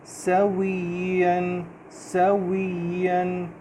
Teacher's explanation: سین کی آواز میں سیٹی کی ساؤنڈ ہوگی